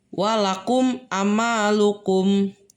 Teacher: Nah, yang terakhir itu yang kelima ada izhar syafawi, yaitu huruf mim mati bertemu dengan huruf ain yang dibaca jelas